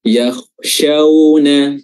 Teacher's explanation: waw di sini waw sukun memiliki sifat lin karena sebelumnya ada fathah